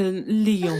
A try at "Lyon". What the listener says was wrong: Reine-mère, on dit Lyon. Tu n'as pas besoin de faire comme moi avec les lèvres. Juste prononce Lyon.